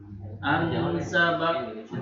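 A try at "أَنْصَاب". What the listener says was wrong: Panjang. Ansab. Panjang dulu ya. Terus kol-kolah Pak. Ansab. Be. Ansab. Kol-kolahnya kol-kolah kubro ya. Ketara sekali atau kelihatan sekali, jelas banget. Ansab. Iya, jadi panjangnya tetap diberikan haknya mat itu kan ya. Ansab.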